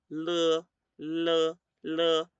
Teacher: Es un sonido más lateral, no nasal, pero la posición de la lengua va sobre la misma posición.